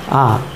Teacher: এই আ উচ্চারণ করার সময় আমাদের মুখ গহবর সম্পূর্ণরূপে ফাঁকা থাকে বা সম্পূর্ণরূপে উন্মুক্ত থাকে · আমাদের জিহ্বা সর্বনিম্ন অবস্থানে থাকে, অর্থাৎ আমাদের মুখগহ্বর সম্পূর্ণ উন্মুক্ত থাকে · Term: বিবৃত স্বরধ্বনি